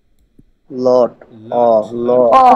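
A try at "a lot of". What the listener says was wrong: কিন্তু অ হয় না, আ আ লাট হ্যাঁ, আ লট অফ, হ্যাঁ মানে একদম আ না, আবার একদম ও না, আ লট অফ। হ্যাঁ একটু অ আ এরকম একটা মাঝে মাঝে একটা উচ্চারণ হয় মেনলি, তো আমরা এটা আই ধরে নিব, আয়ের একটা টান আছে, ঠিক আছে তো।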